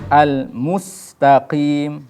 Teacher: mimnya harus dijelaskan dengan dhammah, dengan dimonyongkan. Sin, kemudian taknya dibaca tipis karena dia huruf-huruf tipis.